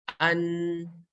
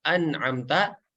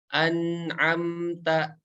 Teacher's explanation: Jadi ketika huruf nun berharokat sukun maka agak dipanjangin dikit nih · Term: nun sukun